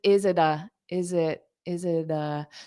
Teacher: instead of that that strong T in it, zit, I would pronounce it more like a D.